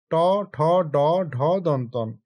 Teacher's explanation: যেগুলো জীভের ডোগা উল্টিয়ে তালুর উপর স্পর্শ করে উচ্চারিত হয় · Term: মূর্ধন্য বর্ণ